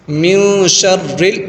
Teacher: نون ساکن ہے اور شین آ رہا آگے تو گنہ کریں گے یہاں پر نون میں، نون ساکن میں، اور اکفا کر کے پڑھیں گے، گنہ کر کے پڑھیں گے یہاں پر۔ · را کو باریک پڑھنا ہے کیونکہ را کے نیچے زیر آتا ہے تو را کو باریک پڑھتے ہیں